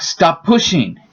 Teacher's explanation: The second P and the space between words disappears. And it becomes much easier to say the word.